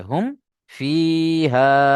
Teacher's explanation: মিম সাকিন কে বিনা গুন্নায় জাহির করে পড়তে হয়। একে ইজহারেশাফাবি বলে।